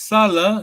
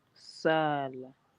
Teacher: this is Salah, short vowel, yes? To work. Mhm. As soon as you make it long vowel, it becomes Sala.